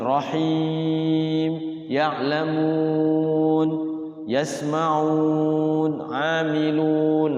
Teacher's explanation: Nah ujung ayat itu namanya mad arid lis sukun. Boleh panjangnya 2, boleh 4, boleh 6. Sebaiknya ya kita memakai yang 6 harokat ya gitu.